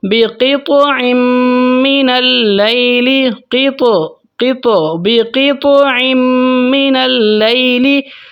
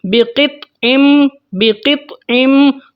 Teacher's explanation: تو یہاں پر جو میں چھوٹا سا قلقلہ کر رہا ہوں، طا کو ہلکا سا میں ہلا رہا ہوں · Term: قلقلہ صغیرہ